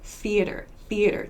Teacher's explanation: just air to make this th sound so it's very quick very short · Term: unvoiced th sounds